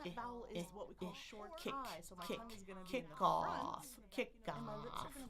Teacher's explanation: that vowel is what we call short I. So my tongue is going to be in the front and my lips are going to be relaxed. I look how small my jaw is.